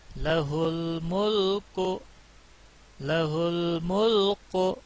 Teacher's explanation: قاف نہیں ہے، موٹا کاف نہیں، یہاں باریک کاف ہے